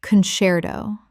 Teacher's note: The C before E makes a CH sound in Italian, which English has kept.